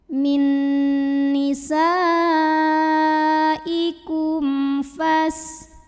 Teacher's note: menghadapi huruf selain mim dan ba kebetulan ini hurufnya Fa maka mim sukun dibunyikan dengan izhar jelas bunyi m nya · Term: izhar syafawi